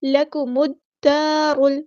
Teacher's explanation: لام یہاں پر لامی شمسی ہے، اس کو ظاہر نہیں کریں گے۔